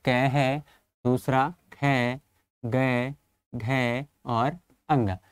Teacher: का वर्ग के जितने भी वर्ण हैं वो सभी कहाँ से उच्चारित होते हैं, कंठ से